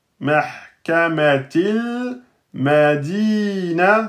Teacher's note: Lam soukoun un temps et demi.